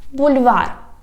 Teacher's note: we have here soft L because after it we write soft sign